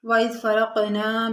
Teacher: وَإِذْ فَرَقْنَا، اذ دال نرمی والے حروف میں سے ہے۔ فرق میں قاف جو ہے یہ ساکن ہے، یہاں پر ہم قلقلہ کریں گے۔ فرق نا میں الف مدہ ہے، یعنی الف خالی اس سے پہلے زبر۔